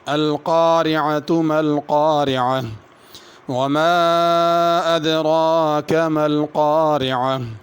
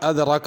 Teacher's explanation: ما پہ مد ہے، اس پہ غنہ ما پہ مد ہے، اس کو کھینچنا ہے۔ ادراک کی را کو پر کرنا ہے اور کھینچ کے پڑھنا ہے۔